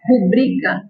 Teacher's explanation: Apesar de a gente ouvir muitas pessoas falarem rúbrica, o correto é rubrica. Ela é paroxítona